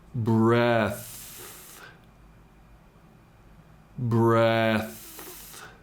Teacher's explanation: The TH is a continuing sound, meaning it isn't cut off at the end.